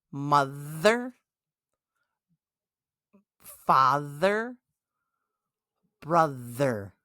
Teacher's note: Mother, father, brother. Feel the vibration in your throat. That, my friends, is the voiced th. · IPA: /ð/